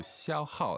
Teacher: that's first tone, fourth tone